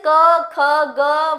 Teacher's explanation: क, ख, ग, वर्ण जो हैं इनको हम कंठ से बोलते हैं। तो इनको हम कंठ्य वर्ण कहते हैं।